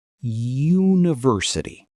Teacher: >> For example, the word university starts with the letter U, which is a vowel. But if you close your eyes and listen, the first sound is a Y. University, a consonant sound.